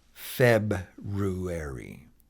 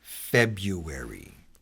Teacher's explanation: a more common way today is to say February and just drop the R out altogether